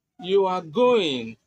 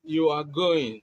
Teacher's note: Now, what if you use a falling tone? You are going, it becomes a statement.